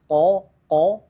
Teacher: Seperti sebelumnya di sini ada huruf qaf yang harus dibaca dengan tebal dan tanpa hams, ko itu dinaikkan lidahnya ko, dan ada mat tabi'i yang harus dibaca dengan 2 harakat, wajib 2 harakat ya.